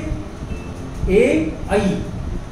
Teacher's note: कंठ और तालु ये दोनों स्थानों से बोला जाता है। ओ, औ, ये है कंठोष्ठ। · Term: कंठ तालु